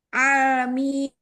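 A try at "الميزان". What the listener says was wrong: Lebarin lagi lamnya. Al-mizani.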